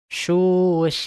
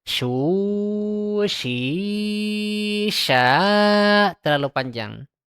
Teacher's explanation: Yang benar suya tidak boleh suya terlalu panjang. Jadi cukup dua harakat dan juga tidak boleh pendek. Susya itu salah.